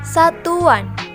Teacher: bunyi pelancar weh digunakan pada kata yang berakhiran dengan bunyi uh dan diberi sufiks-an